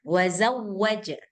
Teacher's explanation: Jangan didengungkan wau tasdid enggak perlu didengungkan.